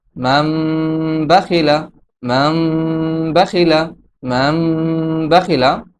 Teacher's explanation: নুন সাকিনের পরে যেহেতু বা আসছে, এই জন্য এই নুনকে মিম দ্বারা পরিবর্তন করে পড়তে হবে